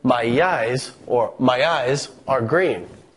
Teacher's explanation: we sneak in just a hint of a Y sound, so it becomes my eyes, or my eyes are green. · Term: extra lettering